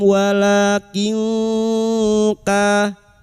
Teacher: samarkan bunyi nun sukun dan mendengung selama 3 harakat. Kanu ka fathah diikuti alif 2 harakat mad tabi'i. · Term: ikfa hakiki